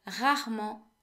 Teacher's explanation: The E of rarement, so after the first E in rarement, is silent.